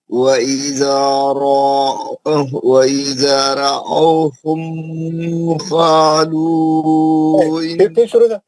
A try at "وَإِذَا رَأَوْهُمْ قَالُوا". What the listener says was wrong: ہم کو جلدی پڑھیں, میم پہ غنہ نہیں کریں.